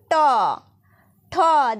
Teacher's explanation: যেমন ট, ঠ, দেখো তোমাদের জিভের যে সামনের দিকের অংশটা রয়েছে সেটা দেখো ঠিক উল্টে যাবে, দিয়ে মূর্ধাকে স্পর্শ করবে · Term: মূর্ধন্য বর্ণ